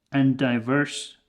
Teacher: 2 D sounds would become 1 D, but we can actually just cut that D in the word and.